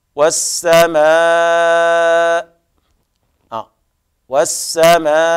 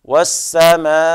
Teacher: فنقف عليه بأربع حركات أو 5 حركات أو 6 حركات اعتدادا بالعارض للسكون، كما نقول مثلا والسماء، والسماء، هذا 5 حركات، والسماء 6 حركات. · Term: المد المتصل